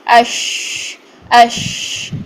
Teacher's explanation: تو پھر اس کے بعد ہماری یہ منہ میں سارے منہ میں اس کی آواز پھیل جائے گی, اور سب سے زیادہ پھیلی ہوئی آواز ان تینوں حروف میں سے شین کی ہوتی ہے · شین میں سانس بھی جاری ہوتی ہے, آواز بھی جاری ہوتی ہے